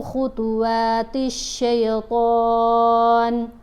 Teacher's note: خا اور طا دونوں جگہوں پر موٹا پڑھا جائے گا ان کو